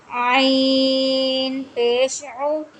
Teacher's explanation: हलक के दरमियान वाले हिस्से से आइन को अदा करेंगे, और हमने इसको ओ पढ़ना है। इस चीज़ का ख्याल रखना है कि आओ, सिर्फ आओ की आवाज़ ना आए, इसकी पेश की आवाज़ प्रॉपर निकले आपकी, ठीक है।